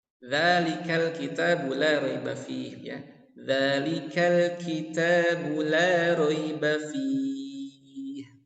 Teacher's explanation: Huruf dzal ini tipis hurufnya. Ujung lidah menempel di gigi seri atas ya